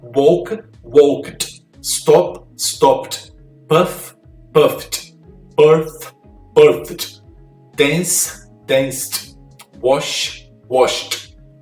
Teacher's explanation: Então você vê que todos os últimos sons aqui são sons de T.